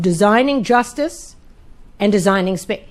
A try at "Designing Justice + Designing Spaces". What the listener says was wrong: The plus is silent. You just leave that.